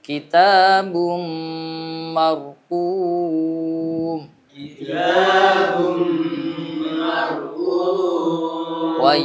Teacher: Mar ya, mar gitu ya. Tetap harus ada takrir, ada takrir sifatnya ro ya.